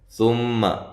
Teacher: ثم میم مشدد پہ غنہ ضروری ہے